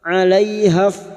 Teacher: Fathah bertemu ya sukun huruf lin kita lunakkan.